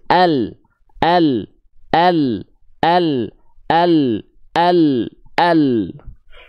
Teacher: bukan dari belakangnya bukan dari tepi lidah samping lidah belakang enggak tepi lidah samping lidah depan bagian kanan dan kiri menyusur keduanya sampai ke ujung lidah · Huruf lam itu dilafalkan dari tepi lidah bagian depan kanan dan kiri, bukan dari belakang ya. Bukan dari tepi lidah samping lidah belakang, enggak.